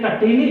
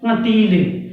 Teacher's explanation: कटीली नाक से उच्चारण नहीं हो रहा है, दूसरे वाले का नाक से भी उच्चारण करना पड़ता है